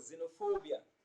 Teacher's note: So we can see what the stressed syllable written in capital letters, fo, xenophobia. So fo is pronounced louder and longer than any other syllable in the word, xenophobia.